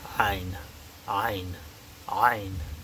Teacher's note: It's in the back of the throat. It's like a gagging sound, kind of. There really is no equivalent.